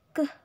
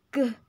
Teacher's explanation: Nah, ini tuh terletak pada voicingnya. Karena huruf K ini termasuk voiceless velar stop, sedangkan huruf G ini termasuk voiced velar stop.